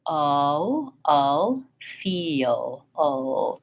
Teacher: the front of my tongue touches up at the last minute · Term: dark